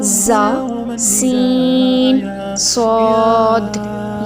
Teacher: 3 حروف کو ادا کرتے وقت سیٹی کی طرح آواز نکلتی ہے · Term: سیٹی والے حروف